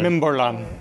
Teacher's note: So you curl your tongue up just before the L. It's a retroflex.